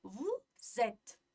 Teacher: Demak, bu yerda ham biz o'sha naqani s ikki unli orasida kelgani uchun z deb talaffuz qilamiz